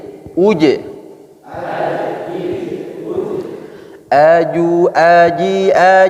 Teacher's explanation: ujui Ji Jadi huruf game ini tidak boleh berdesis ya jajangan sifatnya jahria tidak mengeluarkan udara